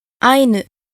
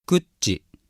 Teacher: the following words have the accent on the first syllable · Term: pitch accent